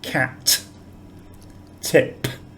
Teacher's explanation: there's the expulsion of air on the final consonant